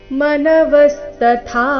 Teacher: ಮೊದಲು ಅಲ್ಪ ಪ್ರಾಣ ತ ನಂತರ ಮಹಾಪ್ರಾಣ ಥ ದೀರ್ಘ.